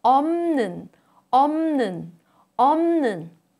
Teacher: Under the influence of 느, 부, a plosive, becomes 무, a nasal sound.